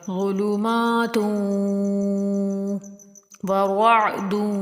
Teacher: ظلمات ورعد، ادھر بھی ادغام ہوگا، دال کو واو کے اندر داخل کر کے پڑھیں گے دون غنے کے ساتھ